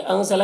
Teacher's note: अंज़ला के नून में इख्फ़ा हो रहा, नून की आवाज़ को नाक में छुपा कर पढ़ेंगे